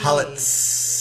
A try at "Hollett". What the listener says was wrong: Just no, there's no S. Hollett.